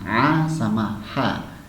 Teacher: huruf ain sama huruf ha itu di posisi wasat, ya, di tengah tenggorokan. Sehingga kita mengucapkan a sama ha itu bersih, terdengar bersih suaranya, a sama ha, ya.